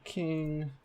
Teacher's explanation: aspiration occurs in the onset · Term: aspirated k